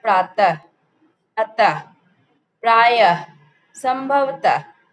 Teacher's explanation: विसर्ग का उच्चारण ह यानी अह के समान होता है।